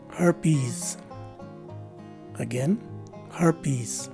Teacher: the second letter e is a long e and the letter s at the end of the word takes a z sound as in zebra